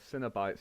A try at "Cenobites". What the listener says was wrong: it's not pronounced like cinema. It's pronounced like it's CEN, not CIN. It's Cenobites or whatever.